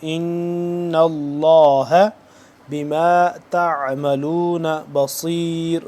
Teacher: لفظ اللہ کے پہلے کیا ہے، زبر ہے، تو اس کو ہم پر پڑھیں گے ، ان اللہ بما تعملون بصیر، سین سے جدا کر کے